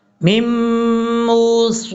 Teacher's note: میم کے بعد جو نون ہے اس نون کو نہیں پڑھیں گے، میم کو ڈائریکٹ میم کے ساتھ کنیکٹ کریں گے